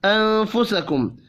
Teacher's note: نون ساکن کے بعد فا ہے، اخفاء حقیقی ہوگا